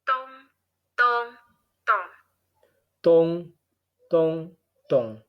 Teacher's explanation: we can hear a high and mid and low tone. 3 tones in a row. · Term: high, mid, low